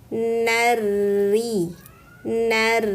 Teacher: Tapi lihat setelahnya ada huruf ro dengan tanda tasdid maka langsung sambar huruf rnya. Jadi nunnya jangan dipanjangkan ya.